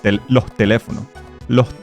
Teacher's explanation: the last S kind of tends to disappear. And in many cases, it becomes an aspirated sound